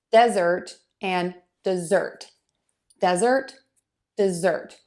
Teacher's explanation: That vowel is a little bit longer in desert than it is in dessert.